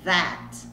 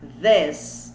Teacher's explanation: aquele TH que lembra um som de Z, que vibra aqui, coça a formiga a ponta da língua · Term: voiced